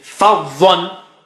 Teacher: Fa is low and dha is very thick and high.